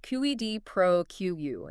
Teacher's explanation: stress on the first and last words generally